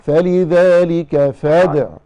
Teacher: بس حضرتك هتنتبهي، فلذلك فادعوا واستقم، العين عليها ضمة وليس بعدها واو